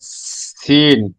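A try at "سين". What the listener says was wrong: আর একটু বাতাস বের হবে। আগে বাতাস বের হবে। সিন।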